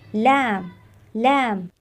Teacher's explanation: जबान का किनारा ज्यादातर ऊपर की तरफ हरकत करता है और जबान के सामने वाला हिस्सा दांतों की जड़ों को छूता है ये देखिए जबान का ये वाला हिस्सा जिसे तरफे लिसान कहते